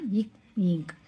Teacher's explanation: பிறக்கும் எழுத்து இக் இங் அப்படிங்கறது இவ்விருமைகளும் நாவினது முதற்பகுதி அன்னத்தை தொடுவதால் தோன்றியது நாவினது முதற்பகுதி அன்னத்தை தொடுவதால் ஏற்படும் எழுத்து